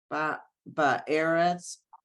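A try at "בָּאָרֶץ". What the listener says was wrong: No, look at the vowels. It's not eretz. It's aretz. Aretz. Once you add the ba, eretz becomes aretz. When you add the in front of it, the aretz.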